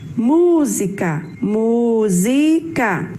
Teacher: Sua sílaba mais forte é o mu e ela está na antepenúltima posição.